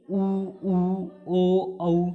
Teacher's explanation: जिन स्वरों के उच्चारण में ओठ वृत्तमुखी या गोलाकार हो जाते हैं उन्हें हम वृत्तमुखी कहते हैं। जैसे ऊ ओ औ, हम बोल के देखेंगे तो हमारा ओठ है बिल्कुल गोल हो जाएगा, तो इसे हम कहते हैं वृत्तमुखी।